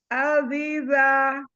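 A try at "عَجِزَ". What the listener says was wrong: Ayo, yang tengah jim, yang ujung za. Ajiza.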